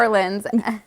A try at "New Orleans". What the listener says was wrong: well, you said New Orleans. Yeah, you pronounced every letter. It's like when people call it Louisville.